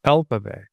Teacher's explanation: the word alphabet has the stress in this syllable, which is all.